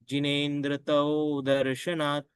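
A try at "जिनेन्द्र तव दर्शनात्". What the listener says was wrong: तव दर्शनात नहीं है तव का संपूर्ण उच्चारण कीजिएगा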